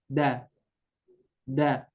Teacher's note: ujung lidah kita menempel ke e langit-langit atau e gigi seri atas ya pangkal dua gigi seri atas ya jadi pangkal itu di